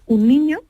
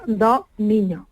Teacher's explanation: el singular tiene la boca normal un niño pero el plural tiene la vocal abierta dos niños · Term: apertura vocal